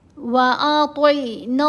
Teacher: تو کے نیچے زیر ہے، تو کو موٹا پڑھیں گے، عین کے ساتھ ملانا ہے